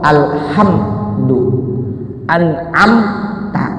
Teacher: Jika mim sukun bertemu dengan huruf selain mim dan ba, maka hukumnya adalah idhar syafawi. Bunyi mim, bunyi m-nya dibaca jelas. · karena ini pengucapan mim, makhrajnya ada di syafatain, 2 bibir. 2 bibir saya sama seperti huruf ba, fa, dan wa.